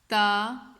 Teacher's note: تا، اس کو آپ نے نرمی سے ادا کرنا ہے، موٹا نہیں کرنا، باریک اس کو پڑھا جائے گا